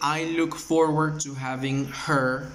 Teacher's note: si se dan cuenta, la H no suena